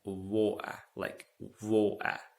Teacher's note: if you want something like a Londoner, you could say that water, like water. There is no T sound